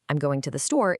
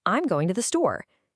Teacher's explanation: It goes up and then gently comes down. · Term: the staircase